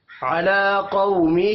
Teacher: علی لام کے اوپر کھڑی زبر ہے، ایک الف کے برابر کھینچ کر پڑھیں گے۔ قو قاف حروف مستعلیہ ہے، پر پڑھا جائے گا، اور قو واو لین ہے۔